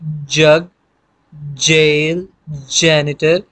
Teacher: आपको थोड़ी सी हवा रोकनी पड़ती है, फिर उसको रोकने के बाद निकालना पड़ता है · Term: पैलेटो एल्वियोलर साउंड्स